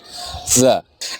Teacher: You put the tip of your tongue between the ridges of your upper teeth and lower teeth, and you let it come.